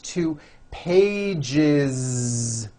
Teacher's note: one page becomes two pages with that voiced z two pages it's not two pages